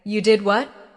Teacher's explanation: if you say, You did what? with a rising tone at the end, it shows surprise.